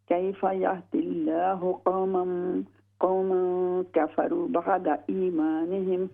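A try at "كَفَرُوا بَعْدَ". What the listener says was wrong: कफ़रू लम्बा कीजिए। कफ़रू बअद।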